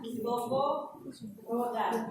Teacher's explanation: Dalam hal ketinggian lidah miring dengan perbedaan antara O dan U. Vokal ini menghasilkan dengan bentuk bibir kurang bundar jika dibandingkan dengan bentuk bibir menghasilkan vokal U. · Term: vokal O